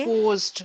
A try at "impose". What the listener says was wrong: Impose, imposed नहीं, impose. Okay? should आ गया ना, देखो modal verbs के बाद कभी भी verb का second form नहीं आएगा. First form ही आएगा. Should impose. They should not impose. Imposed नहीं आ सकता.